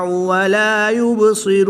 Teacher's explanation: با حروف قلقلہ میں سے ہے، اور جب حروف قلقلہ ساکن ہوں تو ان میں قلقلہ خوب ظاہر کریں گے، اس کو قلقلہ صغریٰ بھی کہتے ہیں۔